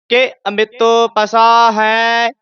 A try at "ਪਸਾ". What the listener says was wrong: ਪਸਾ ਇਹ ਥੋੜਾ ਜਿਹਾ ਲਮਕਾ ਕੇ ਪਸਾ ਨਹੀਂ ਕਹਿਣਾ ਪਸਾ